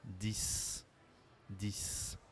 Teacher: On ne prononce pas le X à la fin, mais on prononce comme un S.